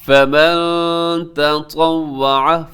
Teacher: طا کا اور تا کے درمیان جو ڈفرنس ہے اس کا خیال رکھیے گا، تا باریک ہے، طا موٹا پڑا جاتا ہے